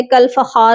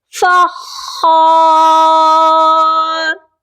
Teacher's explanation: کالفخار، اور اس ورڈ میں بہت سے لوگ مسٹیک کرتے ہیں، خا مشدد ہے، کل فخار نہیں ہوگا۔ خا کو ہم سختی سے پڑھیں گے کیونکہ مشدد حرف کو سختی سے پڑھا جاتا ہے، تو یہاں پر ہم نے خا کو سختی سے پڑھنا ہے، فخار۔